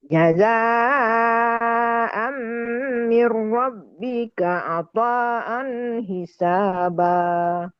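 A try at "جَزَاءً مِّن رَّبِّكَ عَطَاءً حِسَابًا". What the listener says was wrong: Nah, pokoknya supaya dibedain sama mat asli yang 2 harokat itu, panjangin lagi ya. Boleh 4, boleh 6. Itu mat wajib mutasil tuh, tapi nanti kita belum belajar ke sana ya. Tapi saya bilang panjangin lebih dikit lagi, lebih panjang lagi. Sama seperti jaza panjangnya.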